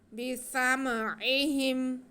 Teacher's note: سین میں سیٹی کی آواز آئے گی، اور عین کو ہم نے حلق کے سینٹر سے ادا کرنا ہے۔